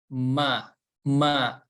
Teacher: Jadi selain makhrojnya dari kedua bibir dan makhroj yang lainnya itu dari rongga hidung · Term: huruf mim